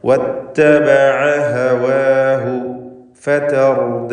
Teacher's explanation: ഐന് തൊണ്ടയുടെ മധ്യമാണ്, ഹവാഹു തൊണ്ടയുടെ അങ്ങേയറ്റമാണ് ഹാഇൻ്റെ മഖ്റജ്. അപ്പോൾ ഹൽക്കിൻ്റെ അക്ഷരങ്ങൾ തുടരെയായി ഇടകലർന്ന് വരുമ്പോൾ കൃത്യമായി അവയുടെ മഖ്റജുകളിൽ നിന്ന് ഉച്ചരിക്കണം.